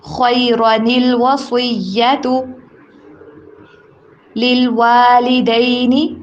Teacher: نون قطنی آ رہا ہے، نون کو لام کے ساتھ آواز کو ملا کے پڑھیں گے